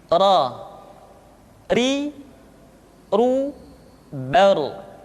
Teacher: Berikutnya adalah huruf ra, diucapkan dengan menyentuhkan punggung lidah dengan langit-langit.